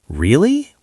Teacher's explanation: saying really with rising tone shows surprise